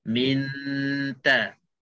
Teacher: kita dengung dan kita dah standby dan kita dah siap-siap untuk nak sebutkan ta. Minta. Jangan habis 2 harakat baru nak sebut ta, itu dia tak nama ikhfa. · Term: ikhfa haqiqi